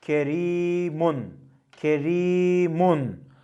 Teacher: Y harfi gelirse ra harfi med olmak uzatılmak zorunda olsa da ince okunması değişmez